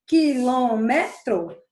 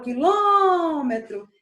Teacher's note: Quilômetro vai ser onde eu passo mais tempo falando, quando minha sílaba tônica fica na antepenúltima sílaba. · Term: proparoxítona